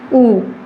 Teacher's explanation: ऊ बोलते ही हमारी ओष्ठ आकृति कैसी हो जाती है? होठ की आकृति कैसी हो जाती है? गोल हो जाती है, सर्किल जैसी हो जाती है। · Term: वृत्ताकार